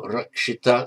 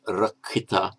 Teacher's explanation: So guarded or protected is rakshita in Sanskrit. And the ksh, as usual, becomes a double k. So rakshita, Sanskrit, rakhita in Pali.